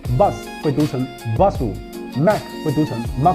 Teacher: Japanese habit of adding vowels after consonants Like bus becomes busu Mac becomes maku